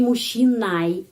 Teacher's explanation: ЖЧ dibaca sebagai ш. Terus, penekanannya мужчиной ya, pada huruf I.